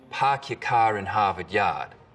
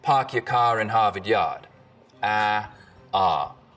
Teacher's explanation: your car in harvard yard we call this the start vowel in boston it's usually pretty fronted park your car in harvard yard in rhode island it's back